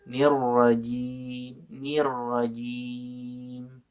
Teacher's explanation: huruf Jim itu tidak boleh mendesis